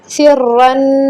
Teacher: را مشدد، دباؤ دیں گے، را کو موٹا کریں گے